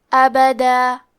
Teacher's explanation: ہم کلمت ابدا پہ رکے تو تنوین زبر پہ مد الف سے رکیں گے